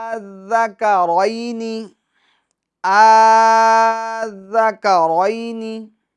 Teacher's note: را کو پور پڑھیں گے کیونکہ را پر زبر ہیں